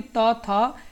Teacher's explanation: तो ये आपकी दंत ध्वनि है।